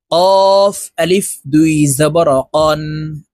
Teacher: কফ হরফ জিহ্বার গোড়া তার বরাবর উপরের তালুর সঙ্গে লাগাইয়া উচ্চারণ করতে হবে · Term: قاف حرف